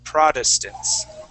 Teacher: that first T we're going to treat as a d